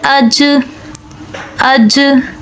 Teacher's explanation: اس کے بعد ہے جیم، اور یہ حروف قلقلہ میں سے ہے، تو ہم جیم کو پڑھتے ہیں حمزہ جیم زبر اج اج، تو یہ ہم قلقلہ کے ساتھ پڑھ رہے ہیں، لیکن یہاں پر جیم کے اندر قلقلہ سے پہلے صفت شدت ہے۔ دیکھیں جب آپ جیم کو بغیر قلقلہ کے ادا کریں گے تو آواز فوراً سے بند ہو جائے گی